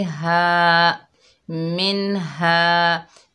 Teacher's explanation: हा के ऊपर ज़बर है, आगे अलिफ खाली है, ये अलिफ मद्दा है, एक अलिफ की मिकदार खींचकर पढ़ेंगे।